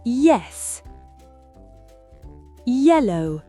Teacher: Ces sons sont très brefs et glissent immédiatement vers la voyelle. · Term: glides